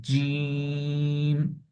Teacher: তো আমরা জিমটা একটু শক্ত করে টেনে পড়বো